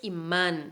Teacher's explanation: imán es una palabra aguda, la última sílaba, man es la fuerte y termina con la N, entonces acentuamos.